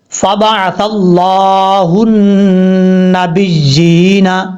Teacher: فبعث اللہ لفظ اللہ سے پہلے، یہ لفظ اللہ ہے، لفظ اللہ سے پہلے زبر ہے اس لیے لفظ اللہ کو پر پڑھیں گے. اور یہاں پر نون کے اوپر شد غنہ کریں گے ایک الف کی مقدار.